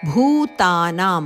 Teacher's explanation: ಭೂ ಮಹಾಪ್ರಾಣಭ ಭೂ ದೀರ್ಘ